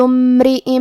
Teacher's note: یہ حمزۃ وصل ہے، لہذا ہمیں حمزہ کو ظاہر نہیں کرنا ہے